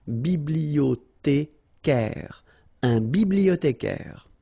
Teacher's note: Bibliothé, remember in French the H doesn't exist, so you don't pronounce it